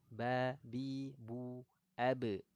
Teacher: Nah, huruf ba keluarnya dari syafataini.